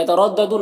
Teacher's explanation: را کے اوپر زبر ہے، را کو پر پڑھیں گے، یہاں پر یالین سے نرم آواز کے ساتھ جلد پڑھیں گے۔